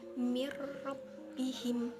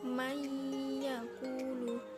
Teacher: dia memasukkan tapi dengan tidak berdengung, langsung saja ke huruf ro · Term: idgham bil gunnah